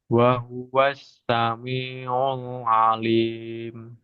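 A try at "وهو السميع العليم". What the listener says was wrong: Ul, tipis ya. Lamnya. Nah, itu masih tebal. Wa huwas sami'ul ul ul ul. Jadi ul itu tebal.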